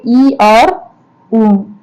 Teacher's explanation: संवृत स्वर मतलब कि जिसके उच्चारण में मुख लगभग बंद रहता है उसे संवृत स्वर कहते हैं